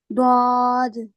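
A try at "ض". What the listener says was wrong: आपकी गलती क्या है, आप वाव वाव लेके आ रहे हो। द्वाद द्वाद, वाव को नहीं, द्वाद द्वाद। वाव नहीं लेके आना है, होठों को गोल करना ही नहीं है। आप मुंह को खोल सकते हो लेकिन गोल नहीं कर सकते। द्वाद ऐसे नहीं, को खोल लो।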